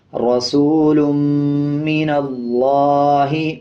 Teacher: لام کے اوپر کھڑا زبر ہے، 1 سیکنڈ کھینچ کے پڑھا جائے گا۔ اسی طرح لام کے اوپر شد بھی ہے، مضبوطی کے ساتھ ادا کیا جائے گا۔